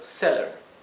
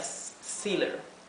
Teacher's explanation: con doble l hace que la e se pronuncie bien cortito seller si fuera una sola l sería seer verdad la palabra